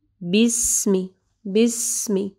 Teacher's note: سین کو جو ہے یہ رخوہ حرف ہے، ٹھیک ہے، تو تھوڑا ٹائم دینا ہے